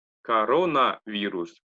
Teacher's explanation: пишется к урону вирус почитается как раз корона вирус потому что корона на вторую о падает ударение поэтому читается как а остальное как а